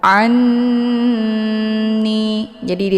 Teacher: Ini dinamakan dengan ghunnah musyaddadah. Cara bacanya, ainnya dileburkan ataupun dimasukkan ke dalam huruf nun sambil ditahan sehingga terbentuk suara yang mendengung. Anni, jadi ditahannya lebih kurang 2 harokat.